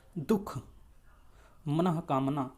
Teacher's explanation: जो विसर्ग है उसका जो उच्चारण होता है वह ह की तरह होता है